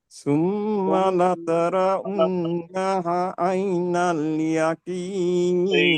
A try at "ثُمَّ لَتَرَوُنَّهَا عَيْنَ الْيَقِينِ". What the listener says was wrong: نہا نہیں، نہا کھینچنا ہے اس کو. نہا عین نہیں بھائی، نہا الف ہے نا. یہ ہے نا، دیکھیے کہاں گیا یہ الف ہے نا، یہاں پہ کہاں گیا بھائی. یقین میں قاف نکالنا ہے.